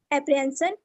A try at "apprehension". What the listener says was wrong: Sun नहीं है. Shun. Apprehension. Sun. It's not sun. It's shun.